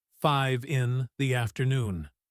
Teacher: When we speak fast, we link the number to the preposition